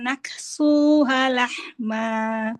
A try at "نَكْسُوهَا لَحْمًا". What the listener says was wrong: Panjang. Naksuha lahma.